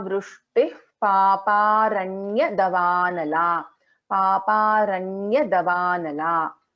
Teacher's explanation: This visarga is followed by pa, which means there is an upadhvaniya.